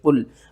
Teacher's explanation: قاف کو موٹا کر کے پڑھنا ہے، لام کے ساتھ ملانا ہے